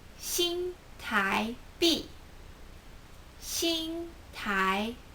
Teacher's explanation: Shing is first tone Tai is second tone